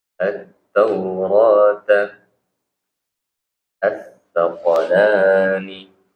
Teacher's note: alif lam syamsiyah itu tidak berbunyi alnya ya. Jadi langsung dia idgham ke huruf setelahnya.